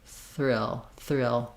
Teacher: just sneak the tongue forward for the th real thrill thrill the back of my tongue is almost still in that r position as much as it can be and the th does not it still has to come forward